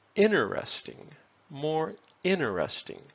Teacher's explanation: some americans say interesting more interesting just removing the t